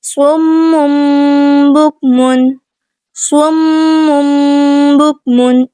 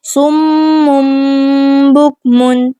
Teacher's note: میم مشدد کا غنہ پہلے ادا کیا جائے گا اور اقلاب والا غنہ بعد میں